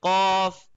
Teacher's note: cough comes from the back side of the roof